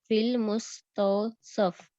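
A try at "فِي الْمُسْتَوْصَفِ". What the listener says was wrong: तौसफी, फी आ गया ना, फी आ गया ना तो या फा के नीचे जेर आ जाएगी, फिल मुस्तौसफी मुरक्कब जारी बन जाएगा, ठीक है ना।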